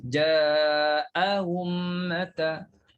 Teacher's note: Tashil hamzah kedua. Hamzah pertama kena sebut jelas. Clear bunyi hamzah tu.